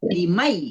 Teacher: Nunnya masuk ke ya. Jadi nunnya enggak kebaca langsung ke ya. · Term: idgham bighunah